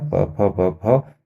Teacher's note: प से लेकर के म तक आप जो है इनको होठों को मिलाए बगैर नहीं बोल सकते · ओष्ठ से जो शब्द निकलते हैं यानी होंठों से, तो देखो आप बिना होंठों के मिलाए नहीं बोल पाओगे। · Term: ओष्ठव्य